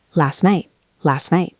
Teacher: The T in last hits the N in necked. That is a difficult combination for the tongue, so we drop the T.